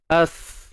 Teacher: Oh, ada suara yang mengalir. Rokhawah. As. Pangkal lidah tak naik.